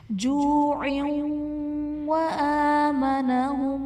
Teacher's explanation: جوع وآمنہم، عین کے نیچے دو زیر کی تنوین ہے، تنوین کے بعد حروف جرملون میں سے واو ہے تو یہاں پر ادغام مع الغنہ کا قاعدہ ہوگا